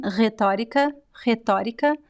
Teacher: the second r in this word it's the um the fricative r so you have to touch the tip of your tongue at the top of the mouth